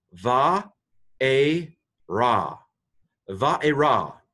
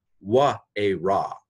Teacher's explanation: Now, I'm not doing W's for vavs. Modern Hebrew pronounces the vav as a v. Now, the older Hebrew, the older pronunciation they taught pronounced it as a w. So that would be wa a ra, which is the transliteration here.